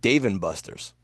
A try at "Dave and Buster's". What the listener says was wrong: do you say Dave and Buster so weird? You put the emphasis on Dave. The emphasis is on Buster's. You're going Dave and Buster.